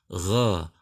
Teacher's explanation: Jadi bunyi fathah kedua huruf ini bukan berbunyi O, tetapi bunyi tebalnya fathah tersebut bukan dengan memonyongkan bibir, tapi dengan mengangkat pangkal lidah. Gha bukan gho. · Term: huruf isti'la